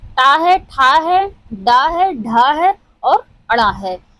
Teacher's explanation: ट वर्ग जो हमारा है वो मूर्धन्य से उच्चारित होता है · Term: मूर्धन्य ध्वनि